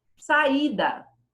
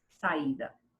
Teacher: Saída também fica sa e da. As vogais se separam. Não fica uma vogal e uma semivogal. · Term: hiato